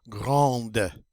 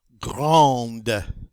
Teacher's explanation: in the feminine we get to pronounce that D.